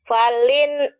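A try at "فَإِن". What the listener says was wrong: kalau lam nggak mungkin lam ini karena ini putus. Kalau lam pasti ada ke bawah.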